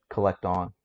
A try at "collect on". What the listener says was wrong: I'm hearing a D between collect and on. Don. Don.